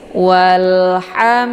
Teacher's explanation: lam dibunyikan secara jelas, bunyinya tipis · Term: alif lam al-qamariyah